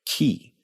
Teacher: This tongue position, with the middle of your tongue raised up near the hard palate, and the back or front of your tongue doing whatever it needs to do to form that consonant, this is palatalization.